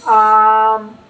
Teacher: جیسے آم میں الف کو کھینچ کے پڑھا جا رہا ہے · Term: الف ممدودہ